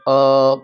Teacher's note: અ કંઠમાંથી માત્ર નીકળશે એટલે કંઠવ્ય કહેશું